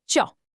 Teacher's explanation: It's the fourth tone and it's sharp and falling. Imagine it like a quick, decisive command, just dropping straight down from a high pitch to a low one.